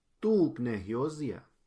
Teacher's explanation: en el pasado, hyosia no se cambia el acento, se queda en la O.